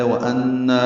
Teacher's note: نون مشدد پہ غنہ ہے اور نا الف مدہ ہے